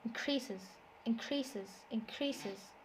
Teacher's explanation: The verb, the stress is on the second syllable, so we say increases, increases, increases.